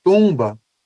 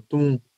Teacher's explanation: A transcrição vai considerar o U e o M como um som nasal